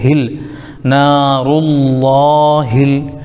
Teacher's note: ہا کے نیچے زیر لیکن لام ساکن ہے، ہا کو لام میں ملائیں گے